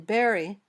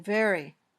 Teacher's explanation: your top teeth touch your bottom lip then air comes out gently there's no popping motion